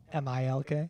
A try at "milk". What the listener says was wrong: short I, not I. You're kind of like MELK.